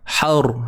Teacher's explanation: Ni ra mati. Sebelumnya baris atas kena tebal.